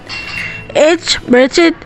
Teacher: Voiceless glottal transition as in English head. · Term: glottal fricative